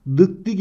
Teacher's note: D sesinin sertleşerek t'ye dönüştüğünü görüyoruz Buna da ünsüz benzeşmesi denir